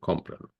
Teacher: So notice that many times, like this, when you go from a sentence with a noun to a sentence with a pronoun, then the word is esdrújula, meaning that the stress tone now is on the third syllable, counting from right to left, first syllable, second syllable, third syllable, or if you prefer, the ante penultimate syllable.